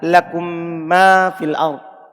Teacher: Ini idgham wujuban secara wajib dan dibaca gunnah pada mim yang semisalnya. Maksudnya ada mim sukun, setelahnya ada huruf mim lagi.